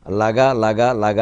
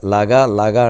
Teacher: ఆ చివరి వగణం అంటే లఘువు గురువే. మొదట హ్రస్వాక్షరం, తర్వాత దీర్ఘాక్షరం, మళ్ళీ హ్రస్వాక్షరం, మళ్ళీ దీర్ఘాక్షరం, మళ్ళీ హ్రస్వాక్షరం, మళ్ళీ దీర్ఘాక్షరం.